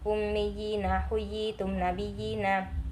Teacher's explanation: tu Ni ua yang ketujuh Mad tamkin yang dinamakan Mad tamkin ialah ya kasrah bertasdid bertemu Ya Sukun panjangnya satu Alif atau dua harakat